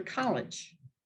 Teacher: College becomes like almost like a short I, college, because it's unaccented, unstressed, and takes on the form, unlike a short E. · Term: unaccented schwa